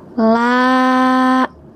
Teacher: Sekarang, panjangkan sebanyak dua harakat.